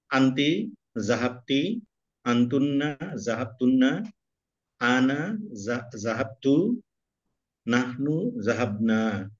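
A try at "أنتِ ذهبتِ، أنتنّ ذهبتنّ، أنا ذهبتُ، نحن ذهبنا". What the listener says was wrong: বাকি আরো চালু করতে হবে, মানে একটু স্লো হয়ে গেছে, আর একটু চালু করতে হবে।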